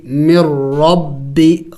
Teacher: را کو موٹا پڑھیں گے اس لیے کہ را کے اوپر جب زبر ہو پیش ہو تو پھر را کو موٹا کر کے پڑھا جاتا ہے